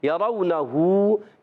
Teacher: ہا الٹا پیش ہو, اس کو ایک الف کھینچیں گے کیونکہ کھڑی حرکت ہے, الٹا پیش ہے.